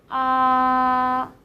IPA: ā